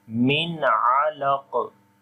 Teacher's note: After the noon sakin or tanween, if one of from 6 throttle letters come, you have to make izhar there, like the clear sound of noon, which we are making here. We are not making nasal sound here.